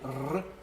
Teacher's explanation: Alors pour situer un petit peu, en moyen français, le R est toujours apico-alvéolaire, c'est-à-dire que c'est la pointe de la langue, l'apex, qui vient contre les gencives et qui va vibrer. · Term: R qu'on appelle aujourd'hui roulé